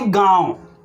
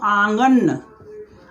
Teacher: अनुनासिक का मतलब चंद्रबिंदु का नाक और मुंह दोनों जगह से उच्चारण होता है · इसका उच्चारण करने में अनुनासिक का बहुत कम समय लगता है